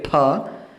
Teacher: फ बोलेंगे जब हमारे मुंह से एक हवा बाहर निकलेगी, फ और फ। तो जब होठों को जोड़ के हम बोलेंगे फ, तब वो वर्ण पवर्ग का है। लेकिन जब राम फलं खादति, तो फ ऐसा जो आवाज निकलता है तो वो उपध्मानीय है।